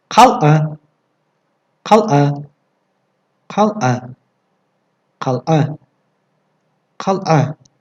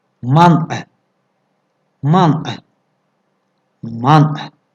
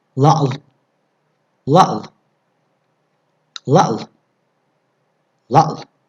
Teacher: Это звонкий, смычный звук, образующийся путем смыкания стенок глотки. Его произношение напоминает произношение твердого знака в русских словах типа съезд, объект, объявление, разъезд. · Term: Согласный звук «айн»